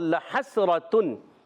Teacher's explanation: हा हलक के दरमियान वाले हिस्से से हा को सीन से मिलाना है।